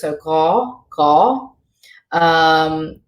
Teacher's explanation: when it gets the H there, it becomes a guttural G sound in the back of the throat.